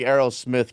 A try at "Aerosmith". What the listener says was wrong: Yeah, he really put emphasis on the Smith. Yeah, Aerosmith.